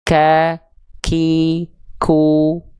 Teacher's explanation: sama-sama dari pangkal lidah ya tapi kalau untuk huruf Kaf itu Pangka lidah kita disentuhkan antara langit-langit yang lunak dan langit-langit yang keras